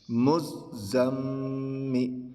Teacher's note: چونکہ میم پر تشدید ہے تو غنہ بھی کریں گے